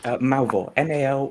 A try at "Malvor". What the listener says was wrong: I think there's an R, honey. There's an R.